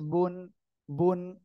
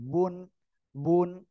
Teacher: দুই ঠোঁট এর ভিজা অংশ থেকে বুন, বুন।